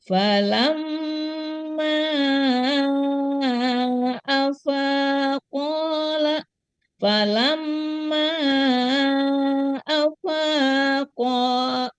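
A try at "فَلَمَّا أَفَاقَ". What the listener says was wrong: lama tambahkan ya, lamanya kurang ini. Falamma, lam dulu kemudian ma ya. Dengung, lam, ma-nya kebetulan di sini memang panjang matobinya.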